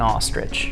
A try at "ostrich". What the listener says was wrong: you're saying it like r i d g e it's i c h